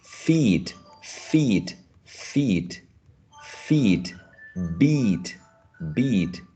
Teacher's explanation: so the first one is tense also the lips are spread right